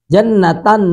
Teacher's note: نون تنوین کا ادغام ہوگا واو میں، نون کی آواز کہاں پہ جائے گی؟ ناک میں، تو ادغام با غنہ ہوگا۔